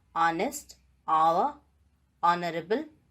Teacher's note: the vowel sound has become dominant and ha sound has been deleted